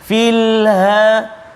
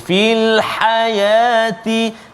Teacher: ha pedas di tengah halqum